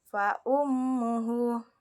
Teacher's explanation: terdapat huruf ha damir yang mana huruf sebelumnya berharakat sehingga dipanjangkan dua harakat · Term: mad silah qasirah